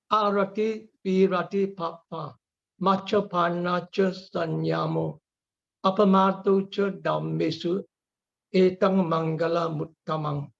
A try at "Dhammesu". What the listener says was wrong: Okay, one thing I noticed was the aspirate. So when you say Dhamma, it's not like Appamadu cha Dhammi.